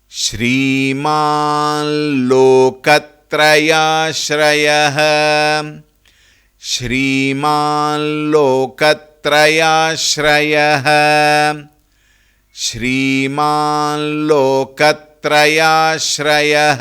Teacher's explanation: Two namas put together. Shriman, because of the sandhi, it becomes Shriman Loka. That, that nasal sound should come.